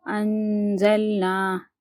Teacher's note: اب یہاں پر دیکھیے نون ساکن ہے، نون ساکن کے بعد کیا ہے، زا، زا موجود ہے، حرف اخفا میں زا آتا ہے، جی آتا ہے، تو ہم کیا کریں گے، نون ساکن کو آواز کو ناک میں لے کے جا کر ایک الف کے برابر چھپا کر پڑھیں گے۔ اس کا کہنے کا مطلب یہ ہے، حمزہ نون زبر ان، زا لام زبر زل، انزل، نون الف زبر نا، انزلنا، اس طریقے سے پڑھیں گے۔